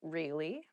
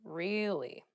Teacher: to show you're interested in a conversation with upward intonation